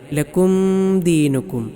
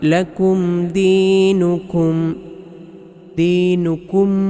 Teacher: സുക്കൂനുള്ള മീമിന് ശേഷം ദാലാണ് അതുകൊണ്ട് ഇളഹാർ ചെയ്യണം വെളിവാക്കിയിട്ടാണ് ഓതേണ്ടത് അല്ലാതെ ചിലർ ഓതുന്നതുപോലെ ലക്കും ദീനുക്കും ഇങ്ങനെ മണിക്കേണ്ടതില്ല മണിക്കാതെ വെളിവാക്കി ലക്കും ദീനുക്കും